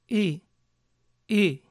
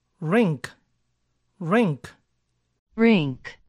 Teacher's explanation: su sonido es como si pronunciamos una e con la boca casi cerrada